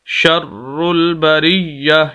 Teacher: را کے اوپر شد سخت کر کے پڑھیں گے اور را کو ملائیں گے لام کے ساتھ ، شر البریہ، یا کے اوپر بھی شد، اس وجہ سے